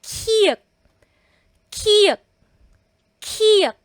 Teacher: So kung pansin niyo po mahangin ang bigkas ng lahat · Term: aspirated consonants